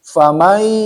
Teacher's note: fa ya huruf bibir ya asyafatain. Fa ada hamas karena fa itu termasuk huruf hamas, huruf famai masuk ya dari awalnya faman ya.